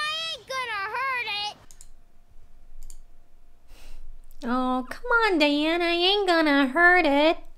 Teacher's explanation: here everything's linked together she doesn't take any breaks